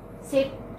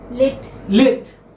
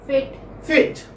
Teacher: centralized front unrounded vowel between close and half close. So this is in between.